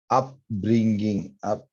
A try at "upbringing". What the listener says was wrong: Good. Up with, but not so much the ging. Upbringing. Like that.